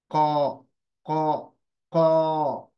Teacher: जबान का जो आपका पिछला हिस्सा है वो अपोजिट, जो मुंह का हिस्सा है, जो नरम तालु बोलते हैं, सॉफ्ट पैलेट, उसको लगेगा जाकर। तो एक चिपचिपाहट की भी आपको महसूस होगी, फीलिंग आएगी। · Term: कौफ